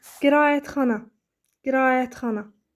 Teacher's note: Qeyd edeyim ki, A-Ə saitlərinin ortasına Y samiti daxil olur tələffüz edərkən.